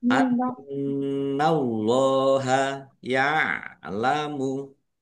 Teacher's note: nun tasdid dibaca gunnah atau mendengung, ditahan ya, harus ditahan biar tampak mendengung. Annallaha, Allahnya dibaca tebal karena harokat di depannya fathah.